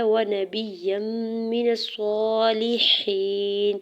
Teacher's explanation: نون کے زبر کو صاد مشدد کے ساتھ ملاتے ہوئے صاد کے اوپر کھڑی زبر ہے 2 حرکت کھینچ کے ادا کریں گے · یا کے اوپر 2 زبر کے تنوین کو میم مشدد کے ساتھ ملاتے ہوئے ادغام مع غنہ کا رول اپلائی ہو رہا ہے ، میم مشدد پہ غنہ کریں گے، میم کی زیر کو